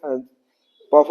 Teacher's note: दोनों जो ओठ है वो सट जाता है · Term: ओष्ठ वर्ण